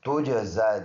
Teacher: جیم میں قلقلہ ہے، زا پر کڑی حرکت ہے اور یا سائلنٹ ہے